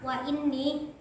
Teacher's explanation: ni-nya itu dibaca dengung dinamakan gunnah